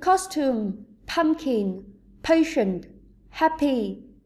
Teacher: những từ như costume fashion Happy có trọng âm thứ nhất